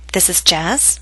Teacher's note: rising intonation tells you that the speaker is uncertain